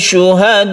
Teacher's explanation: wajib artinya harus kita panjangkan 2,5 alif atau 5 harokat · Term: wajib mutasil